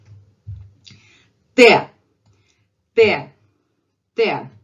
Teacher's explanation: In Russian, it's straight dental sound.